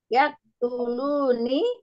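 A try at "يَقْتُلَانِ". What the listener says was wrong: Ya tulani. lamnya fathah. Ya tulani.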